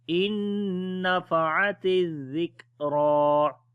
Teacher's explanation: In nafa'atiz, we do not long any letter, then ta azal we read in soft sound, and on the kaf we make shiddat and hums quality also, and then on the ra we read in heavy sound.